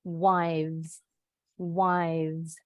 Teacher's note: Seperti kalau kalian baca huruf fa, huruf hijaiyah, fa, sama. Tapi bedanya kalau V, pita suara kita bergetar.